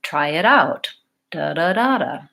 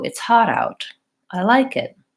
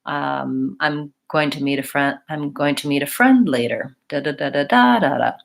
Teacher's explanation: I'm really kind of doing what I call a 2 3 1 pattern where I'm in the middle I rise up and I fall off